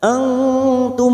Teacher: mim sukun bertemu Hamzah mim sukun dibaca jelas tanpa mendengung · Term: Idhar syafawi